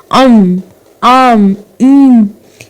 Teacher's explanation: अनुनासिक स्वर होते हैं जो नासिका की सहायता से बोले जाते हैं। मुखेन सह नासिकया अपि उच्चारिता स्वरा अनुनासिक स्वरा संति।